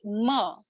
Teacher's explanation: ma is nasal which means that part of your breath is coming out of your nose